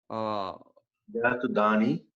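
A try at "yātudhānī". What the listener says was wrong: Yatudhani with a long E. Yatudhani.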